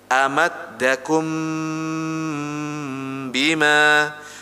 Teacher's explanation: benar-benar huruf mim sukun bertemu dengan huruf ba jadi yang didengung nanti huruf mimnya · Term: Ikhfa Syafawi